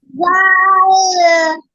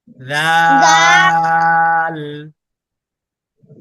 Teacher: উনি জিহ্বার আগাটাকে উপরের দুই দাঁতের আগার সাথে লাগিয়েছে